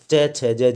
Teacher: च, छ, ज, झ, ये दोस्तों ये तालव्य व्यंजन होते हैं।